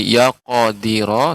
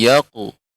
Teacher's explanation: Dia ini qalqalah seperti tidak sampai ke huruf fathah ya, dia tidak sampai ke harokat.